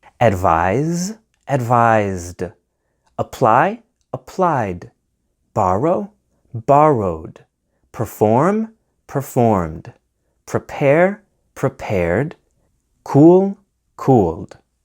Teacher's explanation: The ed ending is pronounced as D after a voiced consonant like B, G, J, L, M, N, R, V, Z, and after vowels like A, E, I, O, U. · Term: D sounding ed ending